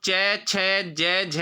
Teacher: तो उच्चारण होता है तालु से, इसलिए तालव्य है। ईचु यशा नाम तालु।